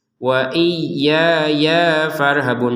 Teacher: ya yang kedua langsung gabung sama fa ya, jangan diputus.